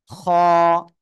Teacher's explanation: গলার শেষ ভাগ থেকে খ অক্ষরটি উচ্চারণ হবে মোটা আওয়াজে